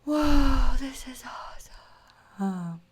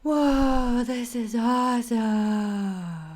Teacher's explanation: Let it be really airy sound, really feel like you're blowing out all the sound while you speak.